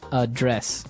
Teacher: >> The verb address has the the stress on the second syllable